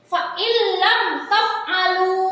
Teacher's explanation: maka cara bacanya adalah dimasukkan tanpa mendengung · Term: idgham bila guna